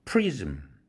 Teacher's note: prism, 이 모음 이 6도까지 올라가는데 z가 유성 마찰음으로서 3도로 책정됐죠. 그런데 마지막 자음 이 사운드는 4도란 말이에요.